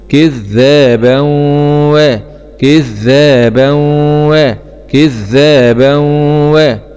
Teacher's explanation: باء فتحتين مع الإدغام بغنة في الواو المفتوحة لأن الواو من حروف كلمة ينمو